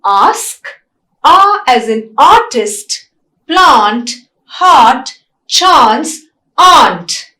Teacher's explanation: A is a open vowel, it is a back vowel and it is a long vowel.